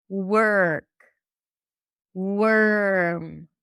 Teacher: It sounds like you're going from the w to the r directly. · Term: the stir sound